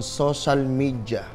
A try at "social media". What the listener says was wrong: It's not social. It's social. Social. Ba't may H? Social media. Because It is D, not J. It's social media, not media.